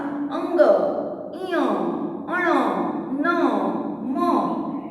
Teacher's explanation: तो सारे यहाँ पे जो है वाइब्रेशन होगा और इसका प्रोनाउंस यहाँ नासिका से होता है, इसलिए उसको अनुनासिक बोलते हैं